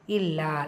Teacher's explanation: இல்லா லாம்ல ஷத்தா அழுத்தம் கொடுக்கணும். 2 கவுண்ட்ஸ்.